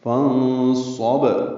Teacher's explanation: صاد آنے کی وجہ سے نون ساکن کی آواز چھپائیں گے، فانصب صاد پر پڑھیں گے اور با ساکن پہ قلقلہ کریں گے